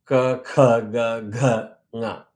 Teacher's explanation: The first one, ka varga, is through the kanthya, guttural here.